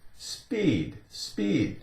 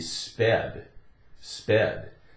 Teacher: The long E sound would turn into a short E.